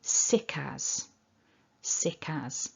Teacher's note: we're going to get that connection between the k and the a